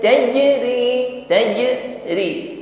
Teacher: samarkan kasrat tanwin pada makhraj huruf ta diiringi dengan dengung yang ringan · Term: ikhfa